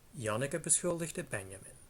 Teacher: an intonation pattern which starts with the rise stays high and eventually ends in a fall